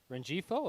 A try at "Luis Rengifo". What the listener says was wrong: the G is silent.